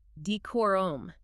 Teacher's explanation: Okay, then we have decorum, pronounced D-cor-R-U, with clear emphasis on that second syllable, K-O-R. Decorum.